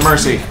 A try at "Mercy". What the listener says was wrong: Is it a Marcy or a Mercy? You said Marcy.